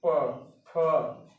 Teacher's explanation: ओठों से टकरा के ध्वनि निकल रही है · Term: ओष्ठय